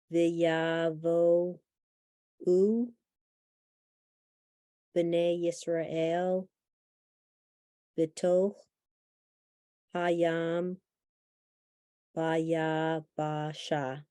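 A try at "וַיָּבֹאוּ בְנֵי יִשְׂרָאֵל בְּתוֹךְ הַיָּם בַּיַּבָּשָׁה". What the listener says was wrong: very nice, nice reading.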